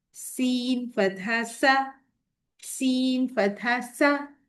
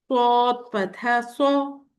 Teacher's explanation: Seen is a light letter, whereas sod is a heavy letter.